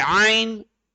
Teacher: Ain should be from your middle throat. It should be deeper.